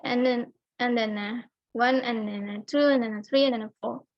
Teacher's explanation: Sedangkan kata and di sini tuh dibacanya santai, tidak terlalu ditekan.